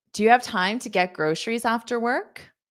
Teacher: this is a yes no question, so you can hear my rising intonation at the end.